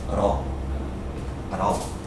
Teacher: You see that T sound? When you run it together, it sounds like a D.